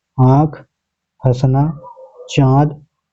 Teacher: जिन स्वरों का उच्चारण मुख और नासिका दोनों से किया जाता है वे अनुनासिक स्वर कहलाते हैं